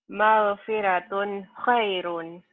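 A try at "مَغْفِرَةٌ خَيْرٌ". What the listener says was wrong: Magfiro. Ro ya, tafhim tebel. Jangan magfiratun.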